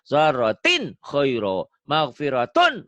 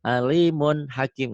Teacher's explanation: Cara membaca idhar pada nun mati atau tanwin ini. Cukuplah dibaca terang bunyi N. Tidak usah ditekan atau disentakkan.